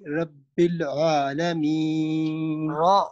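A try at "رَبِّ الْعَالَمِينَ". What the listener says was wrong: را کو تھوڑا سا پر پڑھیں گے، رب العالمین۔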